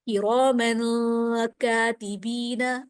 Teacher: تنوین کے بعد اخفاء کے 15 حروف میں سے کاف آ رہا ہے تو یہاں بھی اخفاء ہوگا، غنہ ہوگا